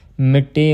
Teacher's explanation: ਮਿੱਟੀ ਪਾਠ ਜਿਹੜਾ ਅਦਕ ਦੇ ਨਾਲ ਬੁਲਾਉਣਾ ਕੱਸ ਕੇ